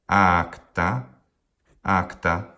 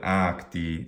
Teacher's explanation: Acta, acta, long, short, but acti, long, long.